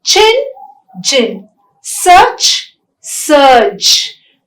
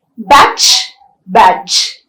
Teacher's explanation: they are the affricates in english and they are articulated with a stricture of complete closure and gradual release